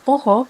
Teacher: Selain itu, perkataan peha pula disebut poho dengan perubahan vokal tengah separa lemah a dan vokal terbuka a kepada vokal separa terbuka belakang O pada kedua-dua suku kata. Tetapi bunyi H masih lagi dikekalkan dalam dialek Hulu Pahang.